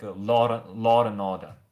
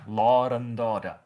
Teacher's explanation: law and order, because it's we have two vowels colliding and we insert an R there. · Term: intrusive R